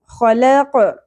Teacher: قاف کو لہات یعنی نرم تالو سے ادا کرنا ہے اپ نے قلقلہ کے ساتھ